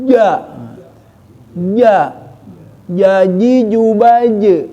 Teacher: makraj Jim itu adalah semua lidah tengah-tengah naik ke atas langit-langit ja ja jaji jubaaj kuat karena Si Jim itu huruf qolqolah